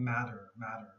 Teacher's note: sometimes the t's here in the middle have more of a d sound